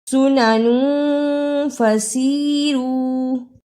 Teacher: تنوین کی آواز کو تھوڑی دیر ناک میں چھپا کر غنہ کرنا ہے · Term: اخفا